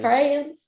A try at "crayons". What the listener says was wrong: no, because he missed some letters. He went CRANS.